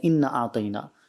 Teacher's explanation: الف کو کھینچنے کے بجائے جو ہے وہ بغیر کھینچے پڑھ دیتے ہیں